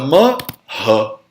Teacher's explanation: Se o visarga está no final da frase, ele repete a vogal.